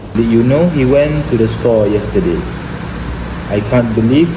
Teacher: accent when he speaks English his intonation is very fat meaning his voice doesn't go up and down much